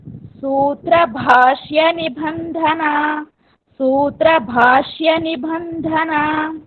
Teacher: भा and dha both are mahapranas.